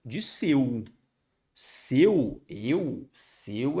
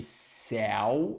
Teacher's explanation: seu é fechado e céu é aberto